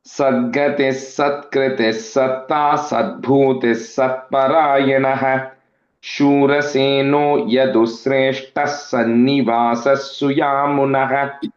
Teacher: Shura Seno Yadu Sreshtaha, put a is Yadusreshtas Sannivasaha, again is Sannivasas Suyamunaha. So all those visargas which are coming there will have the S sound there.